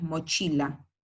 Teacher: mochila, mayor fuerza de voz en la penúltima sílaba, pero no la voy a tildar porque termina en vocal. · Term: palabras graves